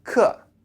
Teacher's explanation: So when you're disgusted, you kind of clench your mouth. And then say this word with a falling intonation, so 客. So you have 不客.